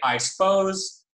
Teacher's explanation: I suppose with deletion of schwa you'll notice that the P is still aspirated and I suppose even though normally we wouldn't have aspiration of · this process of vowel deletion, of schwa deletion, is characteristic of casual speech and fast speech in English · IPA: [a͡ɪ # səpʰo͡ʊz] → [a͡ɪ # spʰo͡ʊz]